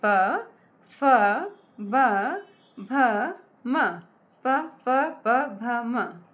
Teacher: प वर्ण का उच्चारण होता है होठ से।